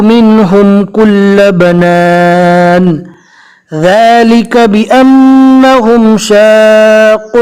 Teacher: میم اور نون مشدد کو ایک الف کے برابر گننا کر کے پڑھنا ہے۔ گننا کہتے ہیں کہ منہ میں آواز تھوڑی دیر روک کر رکھنا۔ آپ دیکھ سکتے ہیں یہاں پر نون ہے تشدید والا اور یہاں پر میم ہے تشدید والا۔